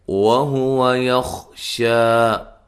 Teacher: شا مد اصلی ہے، ایک الف کی مقدار کے برابر لمبا کریں گے۔